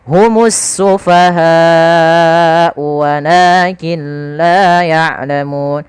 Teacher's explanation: Kemudian ada mimat yang bertemu ha, ini sama sebagaimana bertemu dengan hamzah tadi, yaitu kita hukumi dengan bacaan izhar syafawi, harus dibaca jelas mimnya